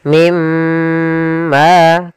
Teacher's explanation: Kemudian di sini pada lafal mim marij ada bacaan idgham bi gunnah, yaitu ditandai dengan adanya nun sukun bertemu dengan huruf mim. Cara membacanya masukkan nunnya ke huruf mim dan kemudian ditahan dengan gunnah.